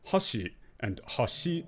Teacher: Like, hashi going up and hashi going down. One's high going down, one's down going up. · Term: pitch accents